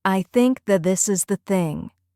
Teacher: The T in that almost disappears and connects with this.